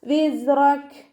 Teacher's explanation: റോ ഫത്തഹ ആയതുകൊണ്ട് നമ്മൾ ഉയർത്തിയിട്ട് ഉച്ചരിക്കുക. കാഫിന് സുക്കൂനിട്ട് നിർത്തി കൊടുക്കുമ്പോൾ കുറച്ച് എയർ പുറത്തോട്ട് പോണ സൗണ്ടിൽ നിർത്തി കൊടുക്കുക